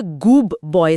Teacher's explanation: लेकिन डी जीभ से और बी होठों से निकलता है। होठों को बी के लिए तैयार करने के चक्कर में डी भी बी जैसा बन जाता है। और यह गूब बॉय सुनाई देता है। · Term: एसिमिलेशन